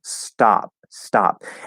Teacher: the s is sort of dulling that t a bit